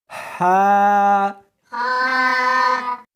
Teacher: اس کو حلق میں سے نکالنا ہے اور ساتھ میں ہوا بھی ہونی چاہیے، ہا۔ ہا نہیں پڑھنی بلکہ اس کو حلق میں سے نکالنا ہے، سینے میں سے نہیں نکالنا، ہا۔